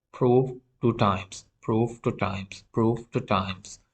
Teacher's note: whenever the following sound, the incoming sound, is a voiceless stop or is a voiceless sound, the preceding voiced fricative would become voiceless.